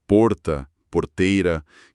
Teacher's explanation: aquele R retroflexo, o R do porta porteira que todo mundo associa ao interior